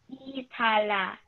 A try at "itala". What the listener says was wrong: Okay, good job.